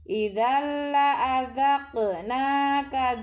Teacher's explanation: tanwin bertemu huruf lam, disebut bacaan idgham bila guna, melebur tanpa mendengung, tanwinnya dileburkan ke huruf lam